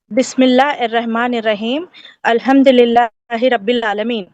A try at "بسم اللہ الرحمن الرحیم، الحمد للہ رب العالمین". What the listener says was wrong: آپ سانس توڑ دے رہی ہیں، سانس توڑ کے نہیں، ایک سانس میں پڑھیں.